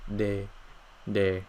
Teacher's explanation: where instead of the air going outward like in English right we're gonna be making the air go inward so it's gonna go in the reverse direction